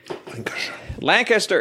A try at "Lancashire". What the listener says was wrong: Lancashire. You said Lancaster, basically, is what you just said.